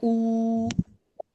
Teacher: If it is a waw mad, we don't say wa sound, no wa sound. It is a oo, 2 counts. You have to 2 counts, elongate it.